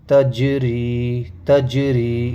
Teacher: تج حروف قلقلہ میں سے ہے تو قلقلہ ہوگا، آواز مخرج سے لوٹ کے آئے گی